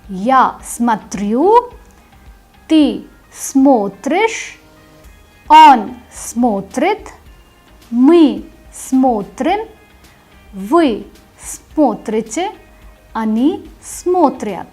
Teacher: Now please pay attention, in this particular verb the stress mark shifts. In the ya form the stress is on the ending, and in the remaining conjugated forms the stress goes on the stem.